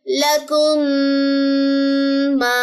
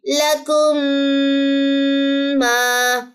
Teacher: मीम साकिन यहां पे चला जाएगा क्योंकि हमने इदगाम कर दिया। काफ की पेश इस मीम से मिलेगी। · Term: इदगाम शफी